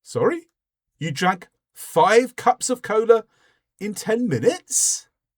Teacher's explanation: So, I've raised the tone at the end. It makes it a question, but really what I'm doing is I'm showing surprised that this had happened.